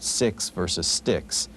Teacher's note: the X sound is really a k s sound